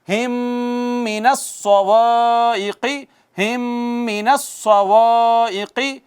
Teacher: میم ساکن کے بعد میم آئی ہے تو ادغام شفوی